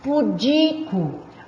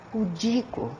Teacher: a sílaba tônica é o di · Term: paroxítona